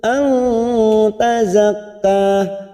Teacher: nun sukun bertemu ta, ikfa hakiki kita samarkan bunyi nun sukun